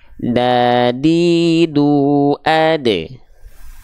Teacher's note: ujung lidah kita kita sentuhkan ke Pangkal gigi seri atas ya ujung lidah kita menyentuh dengan pangkal gigi seri atas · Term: huruf Dal, huruf dal